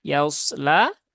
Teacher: pastikan ya-nya tipis, kemudian huruf shadnya baru tebal ya.